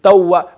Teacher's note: the lips need to be round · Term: wow